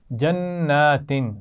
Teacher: نون پر غنہ ہے کیونکہ اس پر شد ہے